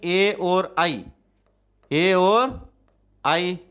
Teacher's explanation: मूल रूप से ये ध्यान रखना है किसका उच्चारण, कंठ प्लस तालु, कंठ प्लस कंठ प्लस तालु, किसका उच्चारण कंठ प्लस तालु दोनों से होता है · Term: कंठ तालु